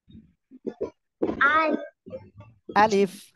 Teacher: আলিফ অক্ষরে কোন টান হবে না